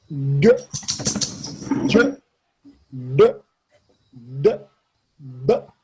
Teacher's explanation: These are unaspirated but voiced. They're vibrations like a frog makes.